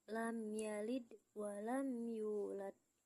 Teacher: Lam yalid, hukum tajwidnya adalah ijhar syafawi karena mim sukun bertemu huruf ya dibaca jelas tanpa mendengung